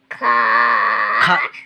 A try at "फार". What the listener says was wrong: खार नाही फार फार